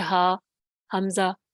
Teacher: حمزہ ہا سینے کی طرف سے آتا ہے اور وہ بالکل پیچھے کی طرف ہوتا ہے، آپ جب بولیں گے ہا حمزہ تو وہ جو ہے آپ کو کہیں پہ گلے میں محسوس ہی نہیں ہوگی اس کی کوئی ساؤنڈ۔